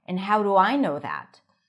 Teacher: when we have the word end, we don't hear the D really, and it connects to the next word. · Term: connected speech